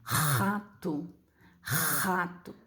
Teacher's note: Isso aqui agora é um som de R e um R raspado na garganta.